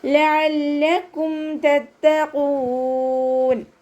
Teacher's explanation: ഖാഫ് ഇസ്തിഅലാൻ്റെ ലെറ്ററാണ്, ഉയർത്തിയിട്ട് ഉച്ചരിക്കണം.